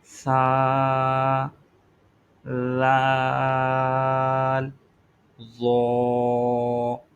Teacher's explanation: یہ حروف لثویہ کہلاتے ہیں اور ان کا جو مخرج ہے وہ یہ ادا کیے جاتے ہیں زبان کا سرا اور اوپر کے دانتوں کی اندرونی کنارے سے ان کو ادا کرنا ہے۔ زبان کا بالکل جو سرا ہے وہ اوپر کے دانتوں کا بھی جو کنارہ ہے، اندرونی کنارہ، وہاں سے اس کو ادا کرنا ہے۔